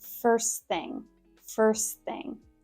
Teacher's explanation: It's basically the drop the T rule. Drop the T on the end of first. And thing, make sure that's unvoiced.